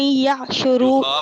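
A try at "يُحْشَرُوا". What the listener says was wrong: یہاں پر آپ زبر پڑھ رہی ہیں، یہاں پر پیش ہے الذین. یحشروا. یہ کون سا صیغہ ہے؟ مجہول ہے کہ کیا ہے؟ یہ بیٹا مجہول ہے نا. تو مجہول میں پیش، یہاں پر زبر آئے گا نا، زبر ہی آیا ہوا ہے.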